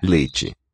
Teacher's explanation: So the vowel has raised, e to e. The mouth just doesn't open as far.